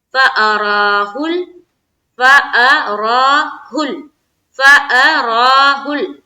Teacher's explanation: فا کو نہیں کھینچیں گے، حمزہ کو بھی نہیں کھینچیں گے، بیچ میں آ جاتی ہے را کو کھینچنا ہے کیونکہ اس کے اوپر ہے کھڑا زبر.